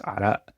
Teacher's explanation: It's arak, but in the Syrian dialect, the qaf becomes a glottal stop, so it's arak.